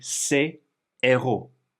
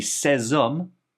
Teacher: Plural would be ces héros. And notice there's no liaison between this S and the H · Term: H aspiré